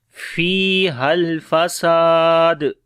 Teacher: ہے، ہا کو لام کے ساتھ ملائیں گے، اور یہاں پر سین کو لمبا کریں گے اور دال کے اوپر قلقلہ کریں گے